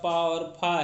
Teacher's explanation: प और फ जो है यह अघोष ध्वनियां है